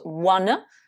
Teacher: À la fin, vous avez le fameux son schwa et pas le son A.